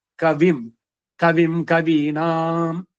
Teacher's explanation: ಅನುಸ್ವಾರದ ಮುಂದೆ ವರ್ಗೀಯ ವ್ಯಂಜನಗಳು ಬಂದ್ರೆ ಕ ಚ ಟ ತ ಪ ಬಂದ್ರೆ ಅನುನಾಸಿಕ ಆಯಾ ವರ್ಗದಂತೆ ಇರುತ್ತೆ